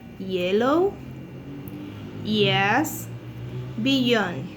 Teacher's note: it's sound produced with the tongue and the hard palate · There is vibration in the vocal folds. It's a linguopalatal place of articulation because it's a sound produced with the tongue and the hard palate. Yes. It's glide because it's a consonant characterized by a continued gliding motion.